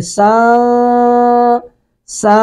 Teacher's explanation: اب قاف جو ہے حروف اخفا میں سے ہے، تو یہاں پہ اخفا کریں گے، عبوسن، سن کو پڑھیں گے سن، سا، نون کی آواز ناک میں چلی گئی، ناک میں گم ہو گئی ہے، زبان اپنی جگہ پہ رہے گی۔ عبوسا، سا یعنی اوپر نہیں لگے گی۔